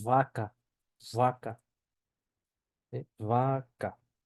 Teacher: entonces Vamos a continuar tenemos la v la v se pronuncia pronuncia como una B vibrada y con un ligero soplido